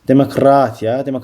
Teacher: Vurğu sözün üçüncü hecasındadır.